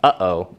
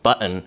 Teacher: you can hear that your epiglottis is literally closing off the sound halfway through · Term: glottal stop